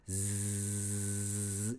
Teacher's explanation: Z 소리도 Z 이러면서 성대를 울리면서 소리가 계속 지속되어야 됩니다